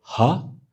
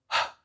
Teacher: It's just air. There's no voice to it.